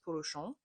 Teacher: and she was doing that with her brother being silly and she said something like and I was like how do you know that there's an N sound if you're saying that in an American accent at the end because in French it's a nasal vowel you don't hear the N